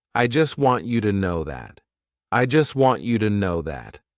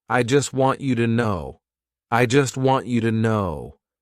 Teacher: We'll drop the T in the word just. The T in want will become a stopped T. The word to will be pronounced with a fast D sound and the schwa sound. And the word no will keep its pronunciation, but won't be properly articulated.